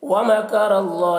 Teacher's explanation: را کو پر پڑھیں گے، را کے اوپر زبر ہے